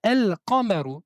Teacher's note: Donc, dans un cas, pour le cas de la lune, on doit prononcer la lettre lam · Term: lettres lunaires